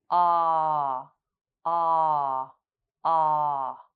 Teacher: Look at the diagram here. You should notice a slight vibration of your vocal cords as ah is a voiced sound. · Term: ah sound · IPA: /ɑ:/